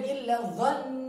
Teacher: dhann yang bertasdid dibaca panjang dan ditekan